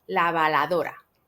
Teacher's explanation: el fonema r no lo tienen por lo tanto lo podrían sustituir por otra l